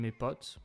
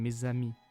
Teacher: Liaison is everywhere in French, like mes in mes potes, my mates, gaining a z in mes amis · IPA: /me.z‿a.mi/